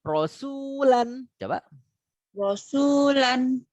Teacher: roh yang dibaca tebal tidak tipis tapi dia tebal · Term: rok tafkhim